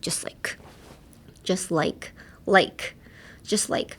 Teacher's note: On this just part, keep it light – like, a slightly lazy just – bring that feeling out, and then like you push out pretty strongly